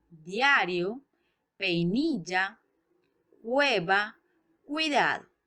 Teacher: todos estos diptongos están formados por una vocal abierta y una cerrada